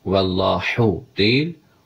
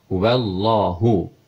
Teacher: H hərfi boğaz ortası deyil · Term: H sadədir